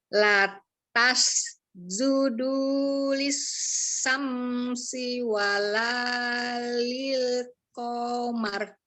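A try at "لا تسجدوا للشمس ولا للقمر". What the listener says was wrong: Tapi ini shin sama sin sama bunyinya. Coba ini. Lishamsi.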